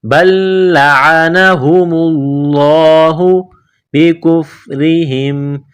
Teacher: بل لعنہم اللہ، میم کو لام کے ساتھ ملانا ہے، لفظ اللہ کے نام سے پہلے پیش ہے تو لفظ اللہ کے نام کو موٹا کرنا ہے